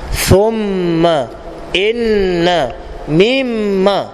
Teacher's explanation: Nun dan huruf mim yang ada tanda syaddah yang ada tanda sabdu dengungnya dua harakat suumma Inna mimma bagi cukup dengung tu dua harakat nah boleh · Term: wajib ghunah